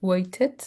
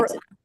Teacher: You have the pronunciation with T, waited, like British, or Waited. American and Australian, they pronounce waited with R.